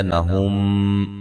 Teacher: یہاں میم ساکن کا ادغام ہے